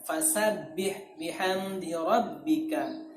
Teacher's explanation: fasabbih itu ada tasydid yang harus kita tekankan